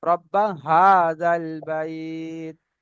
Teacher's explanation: তাহলে এখানে ছোট হা আছে, মানে কণ্ঠনালী শুরু হতে উচ্চারণ হয়। এখানে শুরু যদি হতে, রব্বা, জি, হাজাল বলা হয় তাহলে কিন্তু ভুল হবে, হ্যাঁ এখানে ছোট হা হবে।